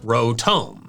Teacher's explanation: with this Pokemon, both Os should be long